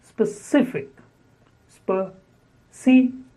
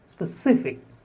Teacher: Specific. Stress on the second syllable.